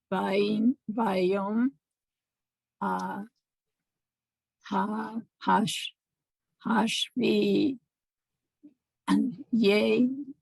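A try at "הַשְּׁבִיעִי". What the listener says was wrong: The yuds don't. You don't really hear them. This is just the ayin and the dot.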